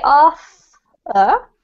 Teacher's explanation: the th is just in your mouth. Nothing comes from your vocal cords. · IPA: /θ/